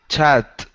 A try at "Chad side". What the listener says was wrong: Okay, push your tongue back in your mouth just a bit. Your tongue is touching your teeth. That's why it sounds like a T. Okay, so instead of a T, you want a D. Chad. Chad side.